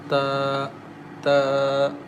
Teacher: Ta comes from the tip of the tongue as ta.